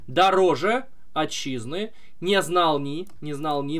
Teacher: На второй слог падает ударение в стопе из трех слогов. Трехсложная стопа, которая повторяется. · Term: Амфибрахий